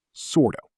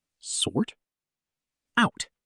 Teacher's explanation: Notice how the T sound links directly into the vowel of out.